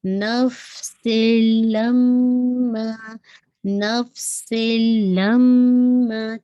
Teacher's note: تنوین کی آواز لام میں مرج ہو رہی ہے لیکن وداؤٹ غنہ. لما، اب یہاں پہ دیکھیے لم ہولڈ فار 2 کاؤنٹ اینڈ ما اسٹریچ فار 2 کاؤنٹ، ٹھیک ہے. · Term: ادغام کامل